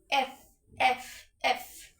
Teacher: উপরের দাঁত যখন নিচের ঠোঁটের সাথে লাগাবেন তখন এটা সঠিক উচ্চারণ হবে এফ। বাতাসও অনেক আসবে।